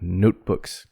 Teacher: don't put an extra syllable on the s books but notebooks two syllables